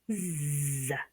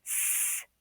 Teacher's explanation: Okay, so Z would be voiced, S would be unvoiced.